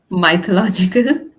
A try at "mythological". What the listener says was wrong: Oh, it's not my, it's me. It's mythological. Mythological.